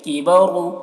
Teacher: را کو بھی پر پڑھیں گے، را کے اوپر پیش ہے